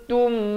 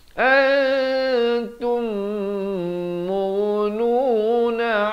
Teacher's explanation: Antum, di sini idgham mislan saghir, mim mati bertemu mim kena dengung betul-betul 2 harakat